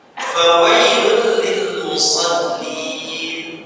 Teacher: dhammatain bertemu dengan lam, hukumnya adalah idgham bila gunnah, dibaca dimasukkan di ghairi gunnah, tanpa gunnah.